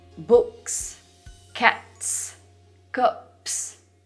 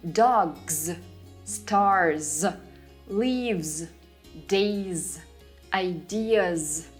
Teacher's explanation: is following another voiceless consonant and thus stays voiceless too but in words where s is following a voiced consonant or a vowel it will no longer stay an s it will turn into a z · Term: voiced z